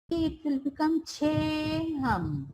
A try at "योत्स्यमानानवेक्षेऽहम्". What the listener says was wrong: Abakshe, not che. The tongue will be upper.